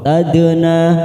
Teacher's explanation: na fathah diikuti alif 2 harokat